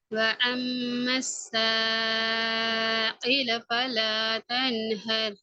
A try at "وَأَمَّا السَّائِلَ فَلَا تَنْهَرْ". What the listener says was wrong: இதுல அந்த அலிஃபினுடைய உச்சரிப்பு உங்களோட இடம் மாறுது. அதாவது நீங்க இந்த இடத்துல பாத்தீங்கன்னா அலிஃபினுடைய உச்சரிப்பு வருகின்ற இடம் வந்து இந்த தொண்டையினுடைய ஆரம்ப பகுதி. அலிஃபை உச்சரிப்போடும் ஆரம்ப பகுதி. அதே நேரம் தொண்டையினுடைய எந்த ஒரு பகுதியிலையும், தொண்டையுடைய உள்பகுதி ஆயிக்கலாம், முன்பகுதி ஆயிக்கலாம், எந்த ஒரு பகுதியிலையும் நாவானது அசைவதற்கு உட்படக்கூடாது. நாவானது அசைவதற்கு உட்பட்டது பிழை என்கிறத நான் பாத்திக்கிறோம்.